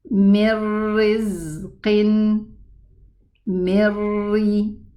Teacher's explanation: There's no ghunna and there's no noon. So I move from the mim kasra to the ra. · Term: total merging